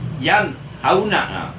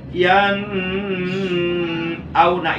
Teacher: Nah, nun sukunnya mesti dibaca jelas, mesti dibaca terang, mesti dibaca nyata, berbunyi an, dan tidak boleh digunakan atau tidak boleh ditahan atau tidak boleh didengungkan. Contoh bacaan yang salah seperti yan auna itu salah. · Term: ijhar